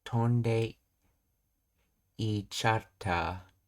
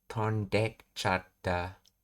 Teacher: In rapid natural speech, the vowel sound at the beginning of ichata is often dropped entirely and is attached to the verb in the te form. · So tonde ichata becomes tondekchata. The e sound is swallowed. All that remains is of the word ite is its consonant sound represented by the small su. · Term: dropping the e sound